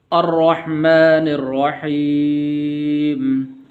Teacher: الرحمن الرحیم، تو یہاں پر بھی را ہے، تو را کے اوپر زبر ہے، اس کو موٹا کرنا ہے۔ اسی طرح حا ہے یہاں پر، تو یہاں پر حا پڑھنی ہے، ہا نہیں پڑھنی، کیونکہ حا کا مخرج الگ ہے اور ہا کا مخرج الگ ہے۔